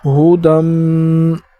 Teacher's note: حمزہ پیش او، لام کڑا مد زبر لا، اولا، حمزہ زیر ای، اولائی، کاف زبر کا، اولائک، علا لام کے اوپر کڑا ہے تو اس وجہ سے اسے ایک الف کی مقدار اوپر کھینچیں گے۔ علا، ہودم، دال کو میم کے ساتھ ملا کر اور میم میں غنہ کریں گے، جیسے ہودم۔